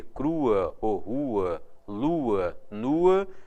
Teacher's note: Quando você lê crua, ou rua, lua, nua, você tem o u e o a separados obrigatoriamente, porque a terminação ua com o u tônico, naturalmente, é hiato